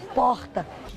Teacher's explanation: É quase um H. É um som quase de H. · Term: R gutural